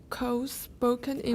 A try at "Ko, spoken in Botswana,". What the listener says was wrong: Oh, pause. The comma tells you to stop, right?